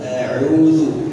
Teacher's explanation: Makhraj bukan dari hidung, tapi dari tengah kerongkongan. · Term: huruf ain